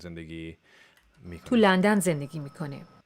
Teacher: She's kind of whispering there. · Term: breathy voice